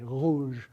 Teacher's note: So if you're pronouncing the French word for red, one of the ways to do it is with this fricative, to say rouge, that sound is a voiced uvular fricative